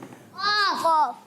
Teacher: ज़बान की जड़ और तालू के नरम हिस्से से अदा होते हैं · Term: क़ाफ़ का मखरज